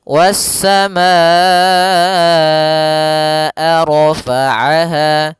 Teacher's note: Wassamaa, baru dilepaskan a-nya. Kita panjangkan dulu ma-nya baru bacaan ke a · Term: mad wajib muttasil